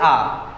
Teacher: विवृत जिसमें पूरा मुंह खुलता हो